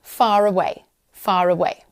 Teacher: Now, as well as the intrusive R, we also have the linking R, and this is really similar, but it occurs when a word ending in the letter R is followed by a word beginning with a vowel sound. In non-rhotic accents, the R is pronounced to connect the two words.